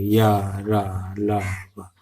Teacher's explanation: लगभग ना के बराबर ही हमारी जीभ हमारे मुख के किसी हिस्से को स्पर्श करती है। या, रा, ला, वा, बिल्कुल उसमें बिल्कुल हल्के से उसमें स्पर्श करती है, हल्का स्पर्श करती है।